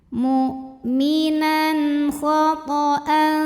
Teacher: Sebab ada tanwin fathah ya yang menghadapi huruf halqi yaitu huruf kha. Maka tanwinnya dibaca jelas, jadi masih bunyi n. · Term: izhar halqi